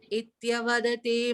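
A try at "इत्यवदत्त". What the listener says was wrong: On the last line, just a small correction. Ityavadatte, the double th is there, right? So ityavadatte.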